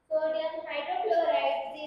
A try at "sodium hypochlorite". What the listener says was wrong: sodium hypochlorite, not hydrochloride. It is hypochlorite.